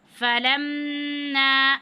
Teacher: اب میم مشدد ہے، یہاں پہ میم مشدد کی صورت میں غنہ کریں گے